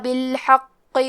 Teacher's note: کلمت بالحق میں حرف القاف کو 2 حرف کے برابر پڑھیں گے اور اسے موٹی آواز میں بھی پڑھیں گے